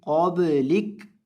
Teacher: با جب بھی ساکن ہو اس کو ہلاتے ہیں، اسے کہتے ہیں کلکلا